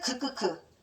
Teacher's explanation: 발음할 때하고 극크 발음할 때하고 어느게 더 안쪽에서 소리 나요.츠츠 극크크 >> 극크크크가 훨씬 더 안쪽에서 소리 납니다